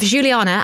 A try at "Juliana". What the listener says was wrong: Have you called her Juliana? No, it's Juliana. You said, yeah, there's like Frenchness to the way you pronounce Juliana.